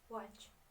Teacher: W, produced with puckered lips, no friction, tongue little raised at back.